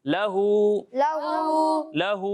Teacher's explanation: یہاں الٹا پیش ہے, اسے ایک الف کے برابر کھینچیں گے, نہ اس سے کم نہ اس سے زیادہ